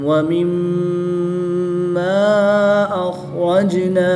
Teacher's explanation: یہاں پر مد منفصل ہوگی، 2 سے 3 الف تک کھینچ کر پڑھیں گے